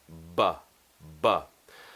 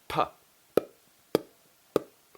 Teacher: These are what we call bilabial plosive sounds, meaning that they require both lips and they're plosive, meaning that the lips open, and at that point when the lips open, it creates the sound. Now, the only difference between these two sounds, P and B, is that one is voiced and one is unvoiced.